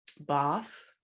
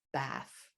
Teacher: there's a large group of words in the UK that get pronounced with an open ah sound